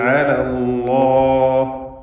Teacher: അല്ലാഹ് എന്ന ഇസ്മുൽ ജലാലയെ തഫ്ഖീം ചെയ്തുകൊണ്ട് അതിലുള്ള ലാമിനെ ഉച്ചരിക്കേണ്ടതാണ്. തൊട്ടു മുമ്പിൽ ഫത്ഹ് വന്നു എന്നതാണ് അതിനുള്ള കാരണം.